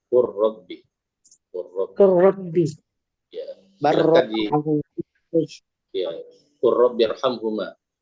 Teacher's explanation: huruf ra-nya dibaca tasdid, lamnya diidghamkan sehingga melebur menjadi satu huruf yang bertasdid